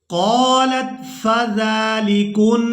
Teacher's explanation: नून मुशद्दद पर गुन्ना करेंगे, आवाज़ नाक में जाएगी और इस आवाज़ को कुछ देर नाक में रोक कर रखेंगे।